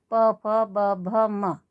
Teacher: जब हम इनको बोलेंगे तो उच्चारण करते समय हमारे होठ आपस में स्पर्श करेंगे, एक दूसरे को छुएंगे। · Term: ओष्ठ